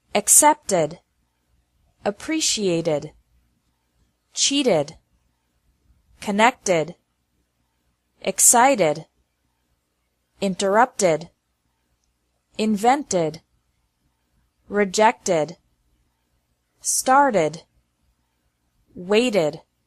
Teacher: The second pronunciation of Ed is like Ed with an extra syllable, after verbs ending with a T or D sound.